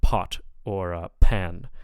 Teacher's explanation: The p sound at the beginning of words will be aspirated, so like pot or pan. So there should be a puff of air there.